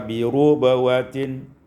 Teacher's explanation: Pada ayat 265 bi rabawatin, yakni bi dhammu ra, dengan dhammahkan ra sehingga kita baca bi rubawatin.